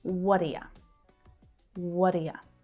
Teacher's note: the unstressed vowels reduced down and the words linked together